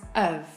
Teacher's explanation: The word we're reducing here is have we say it as UV.